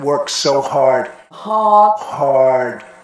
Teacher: most Brits will not pronounce the R sound but most Americans will